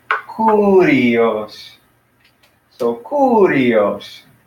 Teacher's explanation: So we got our accent right there on that first syllable of the three syllables.